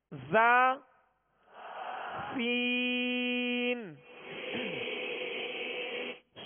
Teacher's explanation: یہ زا سین اور صاد یہ ایک ہی مخرج سے ادا ہوتے ہیں اور ان کے اندر سیٹی پائی جاتی ہے، سختی پائی جاتی ہے